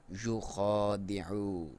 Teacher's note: یا کو کلیئر، خا کو موٹا کر کے پڑھیں گے۔ خا کے اوپر کھڑی زبر ہے، اس کی لمبائی ایک الف کے برابر یا 1 سیکنڈ اپنی آسانی کے لیے۔